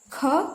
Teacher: इसको उच्चारण करने में जो हवा निकलेगी कुछ देर तक निकलेगी। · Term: महाप्राण